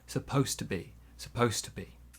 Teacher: we cannot hear the D sound in supposed, and to becomes t.